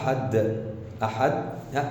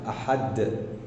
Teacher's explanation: لساني سكن في سقف الفم من قدام، وتاني حاجة صوت الدال او حرف الدال ما طلعش، فلازم اعمل ايه؟ لازم اقلقلها، ان انا اقلقل لساني من المكان اللي سكن فيه وانزله لتحت بفتحة علشان الدال تطلع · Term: القلقلة